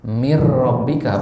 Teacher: kepada huruf setelahnya secara Kamil Kamil artinya sempurna jadi Mir rbika ada bunyi n di situ tidak enggak kedengaran sama sekali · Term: idgham Kamil